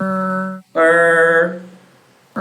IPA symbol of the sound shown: r